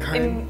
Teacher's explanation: some Americans might say it as like more one syllable